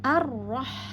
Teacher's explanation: alif lam dengan ro bertasdid maka lamnya tidak terbaca alifnya masuk langsung ke ro yang bertasdid kemudian pada Ar pastikan mulut kita terbuka sempurna rahang atas rahang